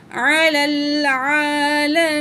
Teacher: عین کے اوپر کھڑا زبر ہے 1 پوائنٹ کھینچ کے پڑھیں گے لام زبر لا میم زیر یا می یا مد ہے 1